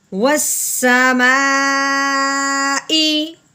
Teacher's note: اس مد کو 4 الف کے برابر لمبا کرتے ہیں